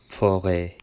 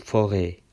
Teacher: Orman, forêt. E'yi biraz daha uzun okuyor.